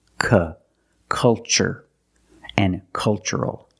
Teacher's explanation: the first syllable is a short U, like cup and up. Make a relaxed sound.